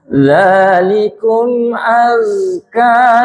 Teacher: Zalikum azka ini banyak yang membaca aska. Zai ini cenderung menjadi S